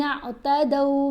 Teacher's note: کیا، وَلَقَدْ عَلِمْتُمُ الَّذِينَ اعْتَدَوْا، دو نہیں اس کو پڑھیں گے، زبر ہے دال کے اوپر، ساتھ واو ساکن ہے، حرف لین ہے، تو دو آواز بنے گی